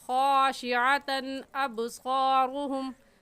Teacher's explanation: اس تنوین پر غنہ نہیں کریں گے